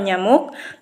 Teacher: Keempat, palatal. Artikulasi ini melibatkan bagian tengah lidah mendekati langit-langit keras atau palatum.